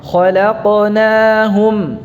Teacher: Khalaqna, lamnya tipis. Ya, lamnya di antara dua huruf tebal, kha dan qaf.